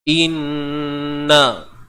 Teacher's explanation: Mesti kena dengung sebab nun bersabdu lah. Sebab ada huruf nun yang bersabdu, maka perlu didengungkan. Wajibul gunnah. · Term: Wajib dengung